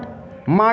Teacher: ओष्ठ plus नासिका से